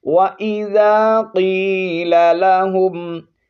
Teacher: وَإِذَا قِيلَ لَهُمْ، قاف کو موٹا پڑھیں گے، یا حرف مدہ ہے، 1 الف کی مقدار لمبا کر کے پڑھنا ہے